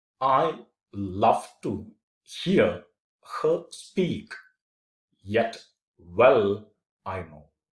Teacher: And when you say love, it goes up. To, it comes down. Here, it again goes up. · I is unstressed. Love is stressed. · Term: iambic pentameter